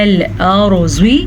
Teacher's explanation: را کو پر پڑھیں گے. را ساکن سے پیچھے والے حرف کے اوپر زبر ہے تو را پر پڑھی جائے گی